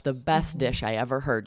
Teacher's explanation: You don't even say the T at all.